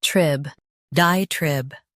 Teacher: Stress die and keep trib clear.